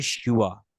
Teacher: হ্যাঁ, এটাকে আমরা, একটা হচ্ছে বর্গীয় ব, একটা হচ্ছে অন্তস্থ ব, মধ্যস্থ বর্ণ, হ্যাঁ, অন্তস্থ বটা লেখা হয়, যার কারণে উচ্চারণটা শিব হবে না, এটা হয় শিওয়া